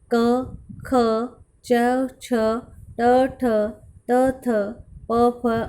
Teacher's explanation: जिन ध्वनियों का उच्चारण स्वर तंत्रियों में कंपन के बिना होता है उनको अघोष व्यंजन कहते हैं